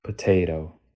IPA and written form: pəˈtʰeːɪɾoʊ (potato)